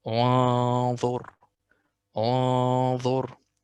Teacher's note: The tone here itself is magnified. Why? Because we have a magnified letter after.